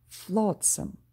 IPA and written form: 'flɔts(ə)m (Flotsam)